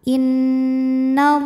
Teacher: bertasdid cara bacanya dengung tahan dengungannya kurang lebih dua harakat innallah lam pada lafaz Allah atau lam jalalah dibunyikan secara tafkhim sebab baris huruf sebelumnya fathah maka bacanya tebal